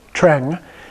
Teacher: Now here, the E is not pronounced like an A, but when you have the NG after it, it's pronounced more like a short E sound, Treng. It's pronounced pretty much the way it looks.